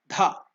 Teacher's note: You are using more energy. That's called Mahaprana. If you use less energy, it is Alpa Prana.